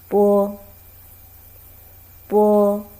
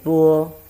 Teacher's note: When you want to pronounce these sounds, you first close your mouth. Your lips are closed too, to stop the airflow, and then open the lips, let the air flow out, and the sound is relatively shorter. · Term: initial b